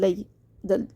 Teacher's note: یہ لوئی نہیں کرنا ہے، لئی باریک کرنا ہے